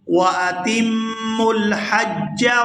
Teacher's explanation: یہاں تا کو میم مشدد کے ساتھ ہم ملائیں گے تو غنہ کریں گے